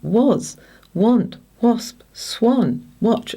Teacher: here we have the short vowel sound A after the W, and it very often has an O sound